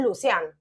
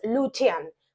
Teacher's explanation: en el idioma Romano la c se pronuncia como ch en español por ejemplo el nombre lucian lo leerías en español lucian pero